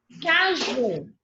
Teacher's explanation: é a última sílaba tônica, ela é oxítona